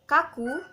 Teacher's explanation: huruf K mati, termasuk oral, termasuk ke dalam velar, dan termasuk juga ke dalam plosif